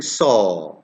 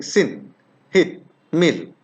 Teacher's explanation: when i'm saying saw it's rounded but when i'm saying sin hit mill it's flat it's not uh around it it's unrounded this vowel is pronounced · the position of my lips is unrounded